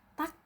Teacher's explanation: setelah membaca tak ini ada angin yang keluar sedikit saja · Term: hembusan angin